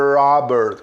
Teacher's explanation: E o Robert, olha aí, ó, dois R's retroflexos